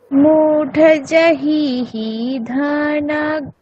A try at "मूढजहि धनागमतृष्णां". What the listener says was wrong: হলো না দীর্ঘ হ্রস্বগুলো ঠিকঠাক করে দেখে বলতে হবে। मूढजहि धनागमतृष्णां